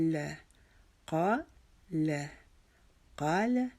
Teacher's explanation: قا ایک الف کے جتنا کھینچا, لا کو جلدی سے پڑھ لینا ہے